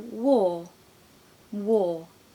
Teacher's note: just leave it off so that it doesn't really exist so the r ends up hanging in the air just lingering to create this kind of floaty soft sound · Very often in the modern RP British accent, we don't pronounce the R. I've said this many a time in my videos, but we just leave it off so that it doesn't really exist.